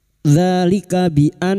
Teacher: nun yang bertasdid gunna musyaddadah kita dengungkan selama 3 harakat